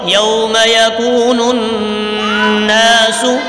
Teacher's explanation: یوم یکون، غنہ ہوگا یہاں پہ، نون سے مل رہا ہے، اس پر غنہ کریں گے